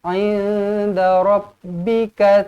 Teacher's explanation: nun kosong bertemu dengan dal, ikhfa hakiki.